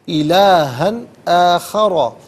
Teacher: ला तजअल मा अल्लाही इलाहन आखरा, इलाहन में हा पर दो ज़बर की तनवीन है, इसके बाद हरफ अल्की हमज़ा आ रहा है तो नाज़रीन तनवीन के बाद या नुनसाकिन के बाद हरफ हल्की में से कोई हरफ आ जाए यानी हरूफ अल्की में से कोई हरफ आ जाए तो तनवीन हो या नुनसाकिन हो उसे इजहार के साथ पढ़ते हैं, इख़फ़ा या गुना नहीं करते। इलाहन आखरा, आखरा में रॉ पर ज़बर है, रॉ को पुर करके पढ़ेंगे।